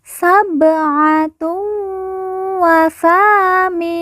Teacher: Ba sukun kita baca pantul karena merupakan huruf qalqalah.